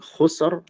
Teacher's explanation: Adapun khusr itu nomor 7. Sukun dhammah. Ya. Ro-nya dibaca tebal.